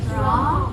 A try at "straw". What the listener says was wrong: Yes, good job.